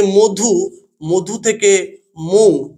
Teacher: তাছাড়া আরেকটি আমরা উদাহরণ নিতে পারি, এই যে মধু, মধু থেকে মৌ, এই মৌ, মধুর এই যে হস্যকারটা রয়ে গেছে, মও রয়ে গেছে, এখান থেকে যেটি অবলুপ্ত হয়েছে সেটি হচ্ছে ধ, অর্থাৎ এই শব্দের শেষ ব্যঞ্জনধ্বনিটি লুপ্ত হয়েছে, তাই একেই বলা হয় অন্ত ব্যঞ্জনধ্বনি লোপ।